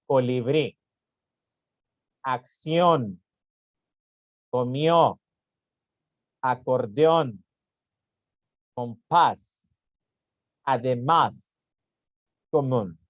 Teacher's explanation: son las palabras cuya sílaba tónica la que se pronuncia más fuerte va en la última sílaba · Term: palabras agudas